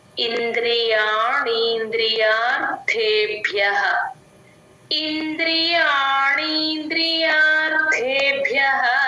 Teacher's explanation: కూడా మహాప్రాణం ఉంది రెండు మహాప్రాణాలు వచ్చినప్పుడు ఒకటికి పడి ఒకటికి పడదు గమనించుకోండి రెండు రెండు మహాప్రాణాలు వినిపించేటట్టు చెప్పాలి